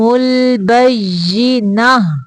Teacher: ملانے کی صورت میں پڑھیں تو اس کو تا پڑھیں گے، اگر یہاں پہ ہم وقف کریں تو پھر اس کو ہا پڑھنا ہوتا ہے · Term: گول تا